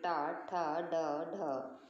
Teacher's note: टवर के जितने भी अक्षर होते हैं अगर हम उनको बोल के देखें तो हमारी जीभ अंदर को मुड़ जाती है, जैसे टा, ठा, ड, ढ।